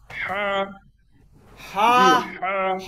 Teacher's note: এই হাটা আমরা গলার ভিতর থেকে বলবো।